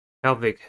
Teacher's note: pelvic has two syllables and the stress is at the first one